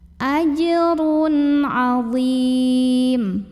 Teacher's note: Berikutnya ada hukum idhar halqi karena ada tanwin dhammah yang bertemu dengan huruf ain, maka tanwin dhammah dibunyikan idhar atau jelas bunyi n-nya.